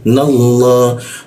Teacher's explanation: Nallah. Nah huruf na bertemu Allah itu lam bertasjidnya dibaca ke arah o dia. Jadi nallah, masuk ke ha-nya.